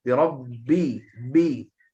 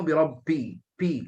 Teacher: Tak ada nafas berterusan banyak. Jahar sebab dia sifat jahar.